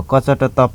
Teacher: अल्प प्राण, अल्प प्राणमा कम सास बाहिर निस्किने, अल्प भनेकै कम हो, संस्कृत शब्द अल्प कम, अल्प प्राण यानि कि कम सास बाहिर निस्किने